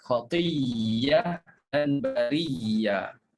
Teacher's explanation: ditukarkan hamzah menjadi huruf ya dan berlaku pertemuan dua ya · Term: idgham